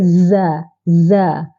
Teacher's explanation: Za ada sifat huruf tunggal iaitu safir desiran yang kuat